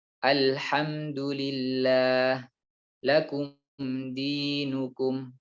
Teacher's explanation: Selain dari dua huruf ini, yaitu huruf ba dan huruf mim, maka huruf mim dibaca jelas dengan gunnah yang tidak dipanjangkan.